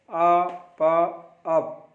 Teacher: पा दोनों होठों से उच्चारण होता है.